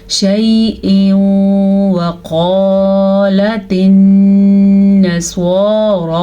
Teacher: क़ाफ मोटी पढ़ेंगे, ये क़ाफ हमेशा ही मोटी पढ़ी जाती है, और अलिफ मद्दा का ख्याल रखना है।